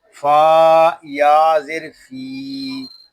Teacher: یہاں فا کو ہم ایک الف تک کھینچ کر پڑھیں گے کیونکہ یہاں یا مدہ ہو رہا ہے